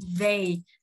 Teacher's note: TH đưa lưỡi ha, cổ họng rung. E với Y thì đọc căng miệng âm E, hạ miệng ha, hạ miệng một nốt đọc âm E.